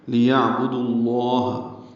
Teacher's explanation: لیعبد اللہ لام کو جلدی پڑھنا ہے، عین ساکن پہ اظہار ہے، با کو جلدی پڑھنا ہے، دال کو لفظ اللہ سے کے لام سے ملانا ہے. لیعبد اللہ بیچ میں واو والی الف لام نہیں پڑھیں گے، دال کو جو لام سے ملایا جا رہا ہے ادغام شمسی ہو رہا ہے. لیعبد اللہ لام اس میں جلالہ پر پڑھیں گے دال کی پیش کی وجہ سے.